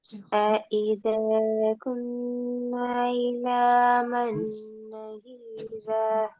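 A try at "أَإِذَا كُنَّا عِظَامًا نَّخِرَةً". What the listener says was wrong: இது ரெண்டு பிழை. இது நஹீரா. அடுத்தது குன்னா. இதெல்லாம் நீட்டுப்படுது இல்ல. இந்த நூனை கட்டா இன்னூட்டணும். இந்த இடத்த நீட்டக்கூடாது. நஹீரா என்று ஓதுதான் பேல. பாவை தான் நீட்டக்கூடாது. ஃபாகி தானே. நீங்க இந்த ஃபாவை நீட்டீங்க.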